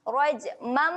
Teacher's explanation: Bila nampak mim iklab dia kena dengung.